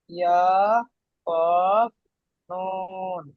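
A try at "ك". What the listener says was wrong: কফ নয়, ওটা কি, কাফ। কফ আলাদা, কাফ আলাদা।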